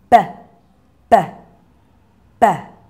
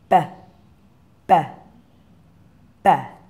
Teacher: Yeah, it's made the same way, lips together and burst open, B, B. But your voice box is switched on. So if you feel in your throat, you should be able to feel it vibrating and tickling your fingers.